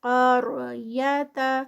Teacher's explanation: ہا پہ 2 کاؤنٹس کھڑی زبر، ذی ہل قار قاف ہیوی، آگے را سے پہلے زبر آ رہی ہے تو را بھی ہیوی ہوگا